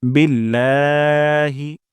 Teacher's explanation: লাতে আমরা এখানে ১ আলিফ পরিমাণ টান দিব।